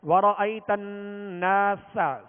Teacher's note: نون پر تشدید ہے تو نون میں غنہ کریں گے. نون اور میم جب بھی مشدد ہوں، ان پر تشدید ہو، شد ہو. · سین کو سختی کے ساتھ اور باریک پڑھیں گے